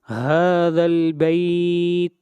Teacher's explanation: ہا کے اوپر کھڑی زبر ہے، ہا کو 1 الف کے برابر لمبا کریں گے، اور اس مد کو مد اصلی کہتے ہیں۔